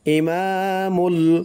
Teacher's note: মা এক আলিফ টান দিতে হবে , ইমামুল, মিম দিয়ে এই যে লাম ধরবে, মিম লাম পেশ